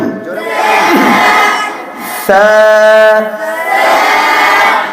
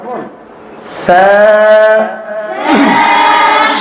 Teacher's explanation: পাতলা করে জিহ্বার আগা সামনের উপরের দুই দাঁতের আগার সঙ্গে লাগাইতে হবে।